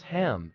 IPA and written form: hæm (ham)